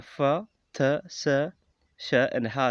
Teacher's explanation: There are the voiceless fricatives, which are the fa, th, sa, sh, and ha sound.